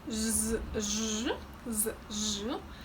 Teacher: when pronouncing zh, I feel that my tongue is getting closer to the palate, as if it's lifted a little